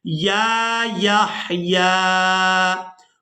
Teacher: पहली या को भी खड़ी जबर की वजह से और दूसरी या को भी खड़ी जबर की वजह से खींच कर अदा किया जाएगा।